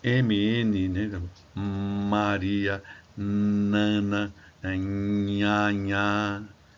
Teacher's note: O ar passa pelas cavidades nasais.